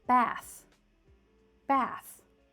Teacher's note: So, here bath looks very similar to bathe. But they have different pronunciations. Bath uses the unvoiced th.